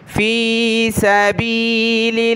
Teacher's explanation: लफ्ज़ अल्लाह से पहले लाम पर ज़ेर है तो लफ्ज़ अल्लाह को हमने बारीक पढ़ना है।